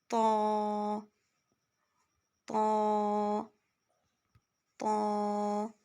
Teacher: ہم زبان کی بیچ جو ہے یعنی زبان کا درمیانی حصہ تالو کی طرف اٹھائیں گے، ٹھیک ہے، تو اس سے آواز جو ہے وہ اس میں موٹا پن آئے گا اور جو مخرج ہے وہ ٹھیک طریقے سے نکلے گا انشاءاللہ۔